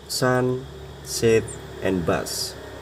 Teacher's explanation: an unvoiced sound, which means that only the airflow is used to produce the sound without any vocal cord vibration. It is a fricative sound produced by forcing air through a narrow opening between the tongue and the roof of the mouth. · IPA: /s/